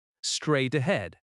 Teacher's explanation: The stress falls on straight and head.